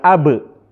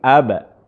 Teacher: Pantulannya lebih dekat kepada fathah.